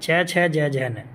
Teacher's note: च वर्ग हो गया तालव्य जो हमारे तालू से बोला जाता है च छ ज ज न इसमें जीव तालू पर टच करती · इसमें जीव तालु पे टच करती है